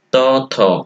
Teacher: ত, থ এগুলো উচ্চারণের ক্ষেত্রে জিভের ডগাটা সক্রিয় হয়ে উপর পাটির দাঁতে আঘাত করে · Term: দন্ত ধ্বনির